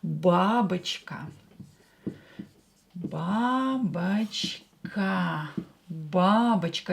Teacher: Here O is not stressed, so pronounce it as A.